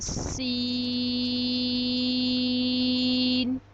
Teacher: جب ہماری زبان کی نوک اوپر اور نیچے کے اگلے دونوں دانتوں کے درمیان آ جائے گی تو سین ادا ہوگا۔ سین کو ہم 5 الف کے برابر لمبا کرتے ہیں